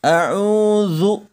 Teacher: pengucapannya jelas terletak pada ujung lidah serta menempati dengan ujung dua gigi seri atas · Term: huruf dza, huruf za